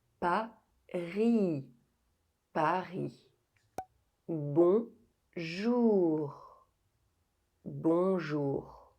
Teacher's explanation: you limit the amount of air going through the mouth, and the uvula will vibrate slightly against the tongue. The uvula is the little thing hanging at the back of the throat. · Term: French R